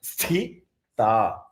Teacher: So first is the Mahaprana Tha.